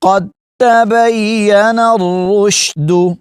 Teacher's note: یہاں پر دال ساکن ہے اور آگے تا مشدد ہے، دال کا تا میں ادغام ہوا ہے، قد تبین نہیں پڑھیں گے، قد تبین الرشد۔